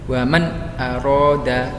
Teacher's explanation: Jadi idhar halki ialah mengucapkan huruf nun sukun atau tanwin dengan jelas tanpa dengung